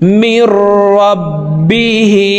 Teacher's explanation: হার নিচে খারাজের আছে, তাই নিচের দিকে ধাবিত করে এই হাকে এক আলিফ টেনে পড়ব।